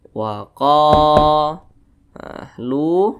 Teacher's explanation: huruf qaf dibaca panjang. Mad tabi'i panjangnya 2 harokat atau kira-kira 2 ketukan. Wa qa, lu, dibaca panjang.